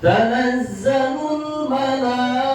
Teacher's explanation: Bertemu dengan huruf hamzah dalam satu kalimat malai, maka menurut qiraat Hafs wajib dibaca 5 harokat, langsung dibaca 5 harokat, jangan kependekan ya. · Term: mad wajib muttasil